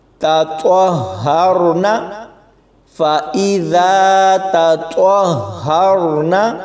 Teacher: طوا کو ہا کے ساتھ ملائیں گے تو سختی کے ساتھ پڑھا جائے گا